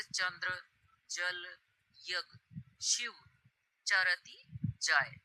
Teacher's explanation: च या इ बोलते समय जीभ का अग्र भाग ताल को छूता है। यही तालव्य उच्चारण है।